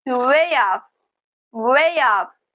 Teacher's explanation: We insert a little y sound. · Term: linking sound